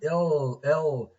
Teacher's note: we have lateral liquid lateral liquid l l so this is formed by letting the air stream flow or go around the sides of the tongue generated however in the r sound this is called retroflex and